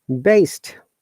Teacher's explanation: best, There is a ta sound after that. Though it is ended up with D, but there is a T sound.